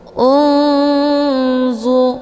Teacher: Hukum bacaan ikhfa awsat dibacanya juga sambil didengungkan.